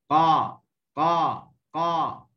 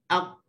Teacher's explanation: Makin dalam tu dia jadi lembut lah. Okay, huruf qaf dia keluar daripada pangkal lidah, disentuh dengan lelangit yang lembut